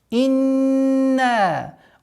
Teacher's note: удержали назализацию в размере двух огласовок, нун, после которой долгота в размере 4 огласовок фатхи